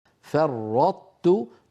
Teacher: نطبق على طاء ونجافي عن تاء مضمومة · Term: إدغام